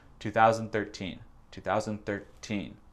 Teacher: Elle a, je sais pas, sauté un peu le mot 2013. En fait, l'accent tonique, c'est sur teen, 13, à peu près.